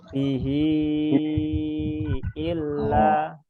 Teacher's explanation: Hi-nya kurang panjang, 4 harokat